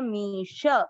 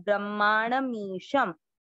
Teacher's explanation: मी में बड़ी ई की मात्रा है इसलिए लंबा खींचेंगे